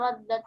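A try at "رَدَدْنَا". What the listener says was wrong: Tadi kurang jelas tadi yang belakang. Radadna nahnu ya.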